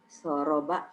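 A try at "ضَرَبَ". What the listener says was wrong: Ada titiknya ya, Bu ya. Doroba.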